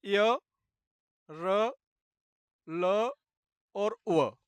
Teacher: अंतस्थ व्यंजन ये होते हैं माँ के बाद य, र, ल और व। इन्हें बोलने के लिए जो हवा है वो डायरेक्ट गले से निकलती है, उसका कोई अवरोध नहीं होता